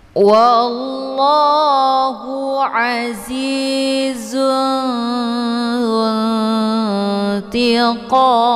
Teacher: Qam ini merupakan mad arid li sukun karena ada mad tabi'i, yaitu ada alif sebelumnya harokat fathah dan ada satu huruf lagi yang kita sukunkan dengan sebab diwakaf, yaitu mim. Maka mad arid li sukunnya dibaca panjang, boleh 2, 4 sampai 6 harokat, harus konsisten dengan nafas.